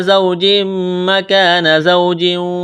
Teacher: زوج مکان واو ساکن سے پہلے زبر ہے، واو لین ہے بغیر کھینچ کے پڑھیں گے، تنوین کے بعد میم ہے، یہاں پر ادغام کریں گے